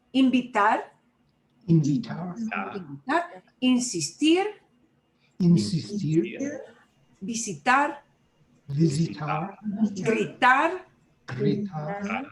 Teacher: whenever we have an infinitive, whether it's A-R, E-R, I-R, we always punch that last vowel sound more. You know, if you're talking about which syllables you stress more, the infinitive always stresses the last syllable unless you see a written accent mark someplace else.